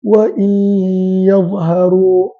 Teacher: idgham bermaksud huruf nun tidak dibaca sebaliknya terus dibaca kepada ya dalam keadaan dikekalkan sifat Nun tersebut iaitu ghunnah maka dibaca ya dan dikekalkan ghunnah sebanyak dua harakat maka sebab